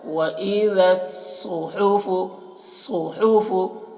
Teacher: صاد کو موٹا کر کے پڑھنا ہے اور ہا کو حلق صدا کریں گے ہوا کے ساتھ میں اس کی آواز نکلے گی